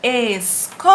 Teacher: A sílaba tônica é o có. É a penúltima sílaba. Se é a penúltima sílaba, então ela é paroxítona.